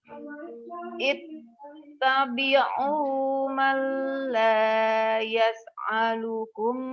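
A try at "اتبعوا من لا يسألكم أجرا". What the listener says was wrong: alukum bukan ain, yas'alukum ya.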